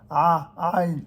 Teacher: c'est la plus gutturale des lettres gutturales. Ça vient du fond de la gorge.